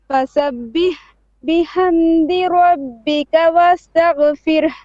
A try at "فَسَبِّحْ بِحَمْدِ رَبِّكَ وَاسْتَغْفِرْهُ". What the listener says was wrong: Okay, now don't pause after fasabbih, okay? Fasabbih bihamdi. Don't pause.